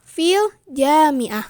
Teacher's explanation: di antara huruf atau di antara lafadz fi sama al jami'ah itu ada jeda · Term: sendi tunggal